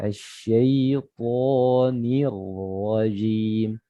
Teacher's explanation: Salah satu sifatnya yang lain yang itu yaitu al-isti'la namanya, terangkatnya pangkal lidah, ya. Pangkal lidah terangkat, sekeliling lingkar lidah juga terangkat, ya, sehingga kedengarannya tebal